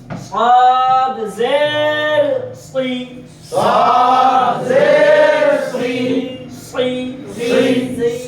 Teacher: পেটের সঙ্গে লাগাইয়া এবং উপরের দাঁতের সাহায্য নিয়ে সাদ উচ্চারিত হয়। সাদ বলার সময় জিহ্বার মধ্যখানটা কি প্রশস্ত হবে, জিহ্বাটা উপরের দিকে ঠেলে উঠবে এবং আওয়াজটা মোটা হবে।